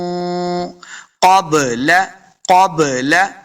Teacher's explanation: قاف حروف مستعلیہ سے اس کو موٹا کرنا ہے. اور با دیکھ رہے ہیں آپ، با ساکن ہے، با حروف قلقلہ سے ہے.